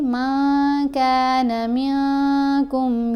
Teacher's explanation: ہم نے نون کی آواز کو ناک میں چھپا کر پڑھنا ہے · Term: اخفا